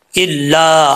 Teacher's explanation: लाम के आगे अलिफ है तो एक अलिफ की मिकर जो है इसको लंबा करेंगे